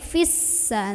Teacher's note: Apabila wasol atau tidak berhenti, gugur mad tabi'inya. Pendek, fissa, langsung tekan ke sin.